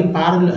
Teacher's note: बंगाल में लोग पर को पार पढ़ देते हैं